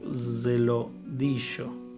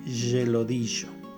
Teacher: proceso de aproximación del fonema alveolar al fonema palatal, esta palatalización